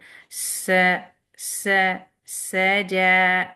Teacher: ایئر لیٹر جس کو ہم ہمس کہتے ہیں تجوید میں، ہوا پہلے آتی ہے اور پھر بعد میں آپ کی فتحہ کی ساؤنڈ آتی ہے